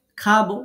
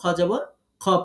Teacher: খতে যদি জবর হয় তাহলে এটার আকার উচ্চারণ করা যায় না